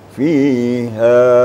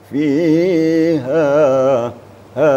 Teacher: kapasitas panjangnya atau madnya satu Alif atau dua ketukan ha dua gerakan ya fiha diukur dengan lagu boleh dengan cengkok